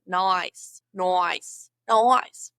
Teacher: Draw out your vowels and bend them to make multiple vowel sounds in one